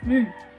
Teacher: it is also a voice alveolar nasal, wherein the oral passage is blocked by pressing the tip of our tongue against the alveolar ridge, and the lips are a little open.